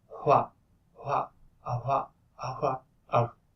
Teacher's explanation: And then we have the labial velar fricative here, which is the WH sound. It is, instead of wa, you just blow harder, and it is voiceless